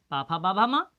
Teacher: देखो आप कैसे ओंठों के आधार पर, जैसे इसके पा वर्ग है, पा वर्ग को ओंठों के आधार पर बोला जाता है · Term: ओष्ठ